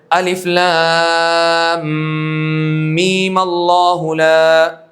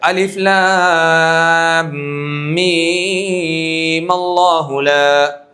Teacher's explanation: صرف آپ می کا ایک الف ادا کر لیجئے اور پھر ملا دیجئے